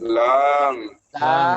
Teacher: Pinggir lidah bagian samping menyentuh langit-langit atau gusi. Lam. Belakang sedikit. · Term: huruf lam